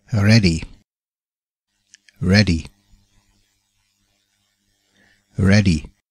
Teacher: Das EA im Wort ready spricht sich wie ein kurzes E.